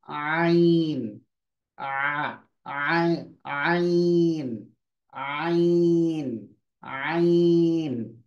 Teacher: और आइन की आवाज बीच हलक से निकलेगी, एपिग्लोटिक लिड को आप क्लोज करेंगे